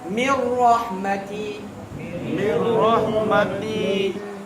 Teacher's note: Jadi idgham bila gunnah masukkan tanpa dengung.